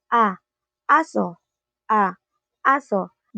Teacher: Isang mababang patinig at nasa sentral na bahagi ng dila. Ibig sabihin kapag sinasabi natin ang a, ibinubuka natin ang malaki ang ating bibig para sumigaw ng ah kapag may nakita kang ipis.